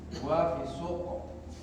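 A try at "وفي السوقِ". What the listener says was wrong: Ya, wa fi suqi. Jangan diwakaf ya. Jangan diwakaf ya.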